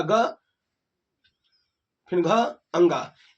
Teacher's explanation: घोष वर्ण, यानी स्वर तंत्रियों में कंपन होगा